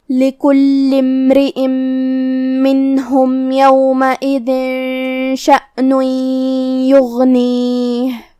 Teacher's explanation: غین کو ہم حلق کے اوپر والے حصے سے ادا کریں گے اور اسے بھاری آواز میں بھی، کیونکہ غین حروف تفخیم میں سے ہے۔ · آخری میں حرف الہا پہ رکیں گے تو اس پہ جزم سے رکیں گے، تو ہمیں حرف الہا کو ظاہر کرنا ہے